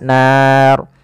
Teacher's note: ro di sini kita hukumi dengan ro tafkhim, ro yang tebal. Tidak boleh dibaca dengan ro tipis.